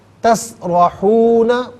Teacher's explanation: تسرحون میں را پر زبر ہے، را کو پر کر کے پڑھا جائے گا